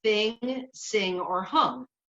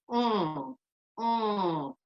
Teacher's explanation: And the back side of your tongue is actually lifted and touching the soft palate. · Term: NG sound